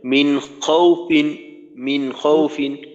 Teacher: ফিন একটু টানের মতো হইল, কিন্তু টান দেওয়া যাবে না।